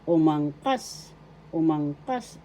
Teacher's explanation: The accent is in the third syllable